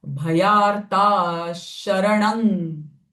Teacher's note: Because this visarga is followed by sh, I am not saying bhayartaha, but the sh sound of visarga will come because the following syllable is sh.